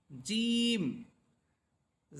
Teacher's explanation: করার সময় আওয়াজটা অনেক বড় হবে বিকট হবে শিন এরপরের লাইন জিম জিহ্বার মধ্যখান তার বরাবর উপরের তালুর সাথে লাগবে